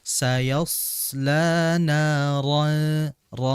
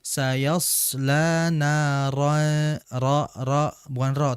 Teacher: Ro ini asalnya tipis, tapi di keadaan dia berharakat fathah maka dia menjadi tebal. Maka ditebalkan sayasla ron jangan dibaca sayasla ro tapi ro ditebalkan lagi huruf rnya. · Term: ro yang mufakham